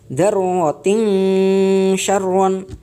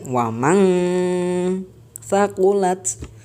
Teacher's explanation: Di sini nunnya samar dan tidak masuk pada huruf selanjutnya. Jadi seolah-olah kalau kita membaca ikhfa, kita tidak bisa mengangan-angan huruf selanjutnya itu berupa huruf apa.